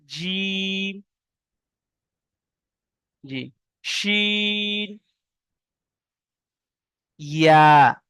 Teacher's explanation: জিভের মাঝখান এবং তার বরাবর উপরে তালুর সাথে লাগিয়া উচ্চারিত হয় জিম, শিন, ইয়া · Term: মাখরাজ